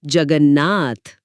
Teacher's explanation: त के बाद नाक वाली ध्वनि न है तो त अपने वर्ग के पांचवें अक्षर न में ही बदल जाएगा